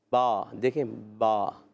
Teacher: دونوں ہونٹوں کے تر حصے سے